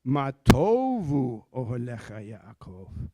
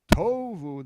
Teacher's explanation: the accent's on the first syllable, not the second